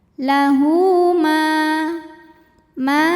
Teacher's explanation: sebab ada Alif yang sebelumnya didahului baris fathah maka huruf mim panjang dua harakat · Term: Mad Thobi'i